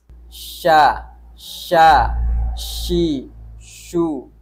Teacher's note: syin yang ketiga adalah istifal tidak terangkatnya pangkal lidah atau red lidahnya rendah sehingganya bunyi huruf syin ini adalah tipis